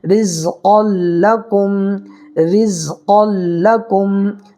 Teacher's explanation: اس را کو باریک پڑھنا ہے، اس لیے کہ را کے نیچے زیر ہے، را کے اوپر زبر یا پیش ہو تو را پور ہوگی، زیر ہو تو باریک ہوگی، زیر ہے یہاں پر باریک پڑھیں گے۔